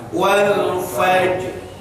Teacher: rohnya munculkan dengan kita menyimpan lidah pada tempat roh, yaitu di langit-langit depan. Wal fajr. Nah, roh jangan dibaca wal fajri. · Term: makhraj ro